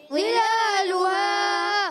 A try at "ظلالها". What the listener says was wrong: یہ ضا کو موٹا کرنا ہے، ذال نہیں پڑھنا، ضا. ظلالها